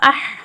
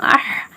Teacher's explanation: ஹம்சா ஹா ஜப அஹ், வெறும் காத்து மட்டும்